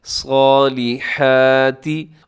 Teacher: صاد جو ہے اس کو اپنے موٹا پڑھنا ہے، اس کو باریک نہیں پڑھنا